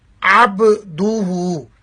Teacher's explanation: عین کا مخرج بھی ہا کی طرح حلق کا درمیانہ حصہ ہے